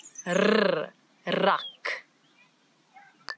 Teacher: it's a rrr, as if your tongue is jumping up and down in your mouth